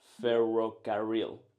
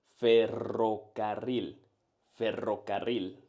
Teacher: First things first, let's understand what we're aiming for. The rolled R or R is produced by vibrating the top of your tongue against the roof of your mouth, just right behind the upper front teeth.